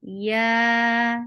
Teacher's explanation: Ya is light and 2 counts long.